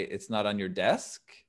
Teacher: So instead of, is it not on your desk? We could say, it's not on your desk with rising intonation.